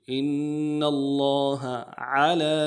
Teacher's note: لفظ اللہ کے لام کے اوپر کھڑا زبر ہے، ایک الف دار میں کھینچیں گے